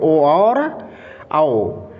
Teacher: कंठ और ओष्ठ से ये दोनों वर्ण बोले जाएंगे